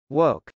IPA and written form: wˈoʊk (woke)